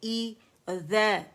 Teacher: اقص الحلق سے ہم نے ای ادا کرنا ہے. آواز ایک کاؤنٹ کے لیے نیچے جائے گی